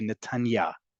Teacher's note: The inflection goes on the last syllable to indicate the direction you are.